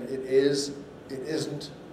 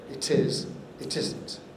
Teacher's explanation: many speakers move the t into the stressed syllable and therefore aspirate it